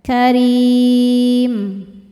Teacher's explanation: sebab ada ya sukun sebelumnya kasrah cara bacanya panjang dua harakat · Mad tabi'inya ya sukun sebelumnya kasrah, huruf yang disukunkannya mim. Maka ra-nya panjang, boleh 2 atau 4 atau 6 harokat asal konsisten dalam sekali baca. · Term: mad thobi zohiri, mad arid li sukun